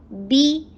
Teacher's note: बी की sound हर कसरा के लिए बांध लीजिए कि बी की साउंड करना है, ई की साउंड करनी है, बिल्कुल भी बे नहीं बोलना